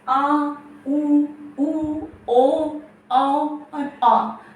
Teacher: जिन स्वरों के उच्चारण के लिए जीभ के पीछे के हिस्से का उपयोग किया जाता है उसको कहते हैं पश्च स्वर